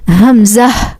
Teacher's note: This Hamza originates from throat nearest to the chest.